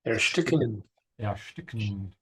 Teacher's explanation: the S and the T becomes sh